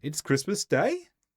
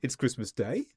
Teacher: We go up at the end rather than going down for a normal statement. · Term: intonation